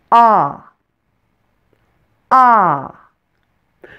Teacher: The short O is a central vowel, so you'll need to pull your tongue back a little from your front teeth to pronounce it. And open your mouth as big as possible.